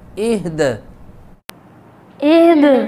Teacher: وقف کریں گے تو دال کو ساکن کریں گے اور دال پہ قلقلہ ہوگا